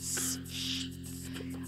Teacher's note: So he's starting with what we call a fricative sound, which is where you rattle a bit of air under closure in your mouth, like shh. And he's doing those quickly, so you can get a sort of percussive element to that.